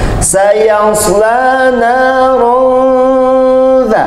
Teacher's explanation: ada tanda dengung dengan hukum ikhfa haqiqi